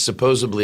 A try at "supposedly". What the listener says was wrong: Supposedly. There's no B in supposedly. Supposedly. Yes, supposedly General E. Lee.